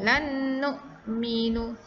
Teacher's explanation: Jawapannya adalah pilihan jawapan yang ketiga iaitu lan nu'minu. Iaitu dia dibunyikan dengan dengung idgham, bermaksud kita memasukkan nun mati, bunyi nun mati ke dalam sebutan huruf yang kedua yang berbaris.